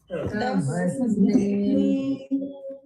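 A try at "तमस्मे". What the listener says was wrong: Again, somebody was doing tamasme. No. Gamagam, no. Like, sound fading away. It has to be crisp. Tamasme. Tamasme.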